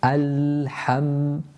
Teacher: the lam and the mim, you kind of linger on them equal time